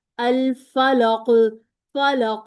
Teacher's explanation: साकिन है तो अच्छा सा कलकला बनाएंगे कि आवाज लौट कर वापस आए। · ساکن ہے تو اچھا سا کلکلا بنائیں گے کہ آواز لوٹ کر واپس آئے